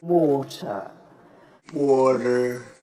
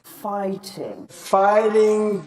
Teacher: Americans will use a tap. This may sound like a short D sound, or even an R sound if you're a non-native speaker of English.